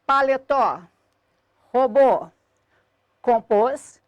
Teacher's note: eu tenho aqui um grupo de palavras cuja sílaba tônica é a última e terminadas em o e os, obrigatoriamente acentuadas.